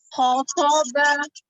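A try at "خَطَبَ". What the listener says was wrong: Ho-nya tidak dimonyongkan ya, dibuka tetap. ho-nya tidak dipanjangkan. Yang pertama khotoba, pendek saja.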